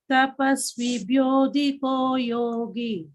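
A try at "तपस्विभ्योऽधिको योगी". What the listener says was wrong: Yogi, the tha is there. Tapasvibhyothiko yogi.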